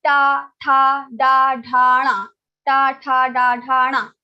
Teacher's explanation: when you are saying ta, tha, da, your tongue touches your murdha · All the ta varga, ta group will be pronounced from the murdha only. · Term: murdhanya varnas